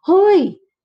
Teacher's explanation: O kaya naman, itataas mo lang yung tono mo.